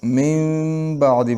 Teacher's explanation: دا نون ساکن چې کوم من کې راغلی دا به په میم سره بدلول شي نو من بعدی به ویل کېږي. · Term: اقلاب